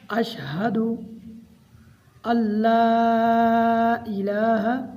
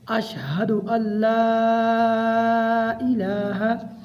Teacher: یہ والا لام یاد رکھیں ہم نے موٹا نہیں پڑھنا کیونکہ یہ اللہ والا لام نہیں ہے، اس کو ہم باریک پڑھیں گے اور اس کے اوپر ماد ہے، اس کو لمبا بھی کرنا ہے۔